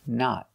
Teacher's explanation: use a stop T at the end and a short o